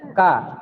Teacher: hamasnya huruf kaf paling kuat ketika dia sukun. Kalau dia berharokat, dia tidak terlalu kuat.